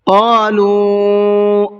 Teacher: قالوا یہاں دیکھیے واو کے اوپر چھوٹا مد ہے، اس کو مد منفصل کہا جاتا ہے، اس کو 1 سے 3 الف کی برابر کھینچ کر کے پڑھیں گے